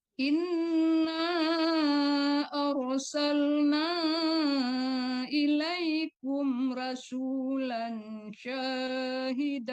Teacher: Rasul jangan rasula. Tapi rasulan kalau rasula itu berhenti.